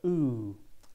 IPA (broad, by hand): uː